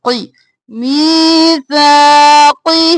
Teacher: اور سا دونوں میں یا مدہ الف مدہ ہے، کھینچیں گے، قی جلدی سے اور موٹا ، قی میثاقہ، اور ہی کو بھی ایک الف کے برابر